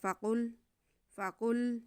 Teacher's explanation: قاف حروف مستعلیہ میں سے، اسے تھوڑا سا موٹا کر کے پڑھیں گے، بس باقی سیدھا سیدھا ہے.